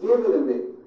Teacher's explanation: the only big change comes from the T's being pronounced as D's. And this happens because the T's fall between two vowel sounds. If you remember in American pronunciation, when T's fall between two vowels, they become voiced and are pronounced as D's.